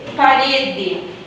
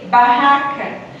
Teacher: essa obstrução pode ser feita pelos lábios resultando nas explosivas labiais